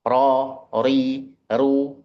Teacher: ujung lidahnya bertemu dengan langit-langit bagian depan. Bukan kayak R itu.